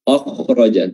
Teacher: Huruf kha-nya harus tebal, namun huruf a-nya jangan tebal